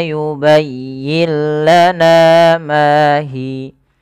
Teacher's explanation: Maka cara membacanya, nunnya dimasukkan ke huruf lam, dan itulah yang kita namakan dengan idgham. Idgham artinya memasukkan bunyi suara nun ke huruf setelahnya, ke huruf lam, mengganti menjadi huruf lam. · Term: idgham bila gunnah